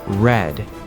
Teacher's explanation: In American English, we curl our tongue back a little bit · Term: American R